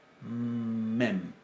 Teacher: La mem es una bilabial oclusiva, nasal, sonora. Mem, nuestra M.